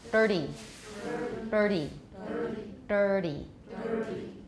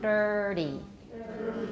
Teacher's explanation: try dirty, but make a retroflex for dir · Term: flap